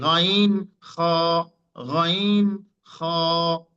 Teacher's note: কণ্ঠনালীর শেষ ভাগ থেকে গাইন খ